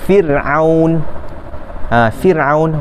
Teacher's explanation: Selepas daripada huruf ra yang sukun itu tiada huruf isti'la, maka ra itu akan dibaca dengan nipis.